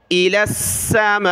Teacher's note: حمزہ زیر ای، لام کو سین کے ساتھ ملایا